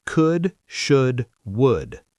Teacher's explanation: Could. Should. Would. None of these have an L sound. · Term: silent L